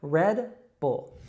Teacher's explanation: It's just red, like the color, red. And then bull, we have that dark L sound again